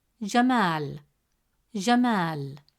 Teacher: Since the long vowel alif comes immediately after ma, it stretches the short a sound into a long a sound. Instead of pronouncing it as ma, the presence of al if makes it ma.